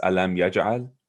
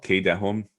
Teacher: So we have this alam yaj'al, where you have a mim sukun and then a ya afterwards, but no ba. So you pronounce the mim sukun clearly. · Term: idhar shafawi